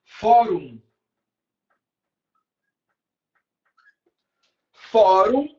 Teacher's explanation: A sílaba tônica é fó, então é a penúltima.